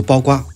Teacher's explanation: The word baokuo is pronounced as baogua in Taiwan.